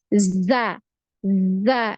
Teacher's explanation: ketika mau mengucapkan huruf Zai ini ada aliran suaranya